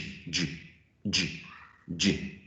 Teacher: So it's a closure followed by a release of air. · it's just like combining a plosive and a fricative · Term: affricate